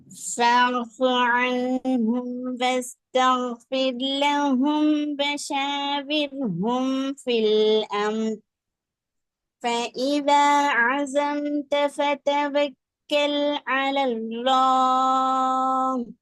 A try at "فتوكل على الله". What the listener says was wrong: அல்லாட உச்சரிப்பு ஒன்றும் போதாது. அல தா தான் வருது, லா வருது இல்ல. அலல்லாஹ் லா இல் லா அலல்லாஹ். நீங்க அலத்தா அல்ல, அலத்தா என்ன, நீங்க தா சவுண்ட் நீக்கி பாக்குறீங்க. வாய்ப்புள்ள அடுக்கிறது போதாது. அலல்லா என்றால் அதுல வாய் முழுமையான அளவான உச்சரிப்பு எடுக்க போயிடும்.